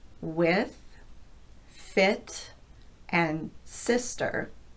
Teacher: this vowel is slightly lower and the tongue is more relaxed than for the E sound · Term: short I